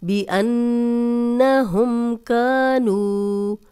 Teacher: جزم والی واو پیچھے نون پہ پیش 2 حرکات لمبا کریں گے · بِأَنَّهُمْ كَانُوا کا الف مدہ 2 حرکات لمبا کریں گے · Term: واو مدہ